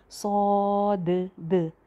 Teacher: तो इसी तरह इसको मोटा करके और भरा हुआ मुंह करके सौद। और लास्ट पे जो दाल की आवाज़ आ रही है वो बाउंसी साउंड होनी चाहिए